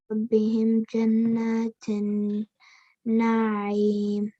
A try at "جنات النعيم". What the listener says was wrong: But the noons need to be stretched. جنات النعيم. جنات النعيم. See that? Stretch in here, stretch in here.